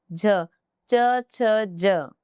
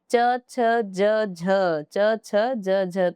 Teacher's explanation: आपकी जिव्वा ऊपर तलवे को टच कर रही है तो यह हो जाएगी तालव्य